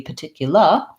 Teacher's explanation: leave it out unlike british the british pronunciation would be particular they would do a schwa for both of those r's that are not at the start of a syllable